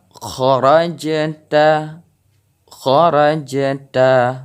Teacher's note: Jadi kita dengar suara pantulan dari jim ini.